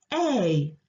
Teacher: it's made of an ah and an it joined together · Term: long vowel sound a